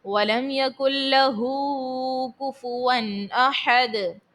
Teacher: ہا کے اوپر جو ہے الٹا پیش ہے تو اس کو کھینچ کر ادا کریں گے ایک الف کی مقدار، اور اس کے بعد دال میں آخر میں ساکن کرنے کی صورت میں دال کو خوب ظاہر کریں گے۔